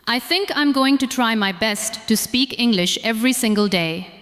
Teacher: notice how going to flows together. Listen to how try my connects smoothly. Try to say the whole sentence as one smooth thought, not as many separate words. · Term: connected speech